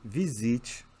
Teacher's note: em visite tanto no rio quanto em são paulo qualquer lugar do brasil na verdade o s tem som de z